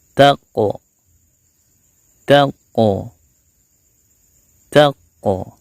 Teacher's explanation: dia memantul ya, memantul disertai juga dengan sifat yang tebal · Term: huruf qaf